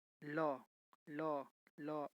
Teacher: ल का उच्चारण दांत और जीभ के मेल से होता है